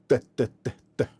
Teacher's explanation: வாய்ஸ்டு dental ஃப்ரிகேட்டிவ். அப்போ ஒரு friction அங்கே இருக்கணும், ஃப்ரிகேட்டிவ்னு இருக்கு.